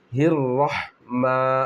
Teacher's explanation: میم پر کھڑا زبر ہے، 1 الف کی مقدار کھینچ کر پڑھیں گے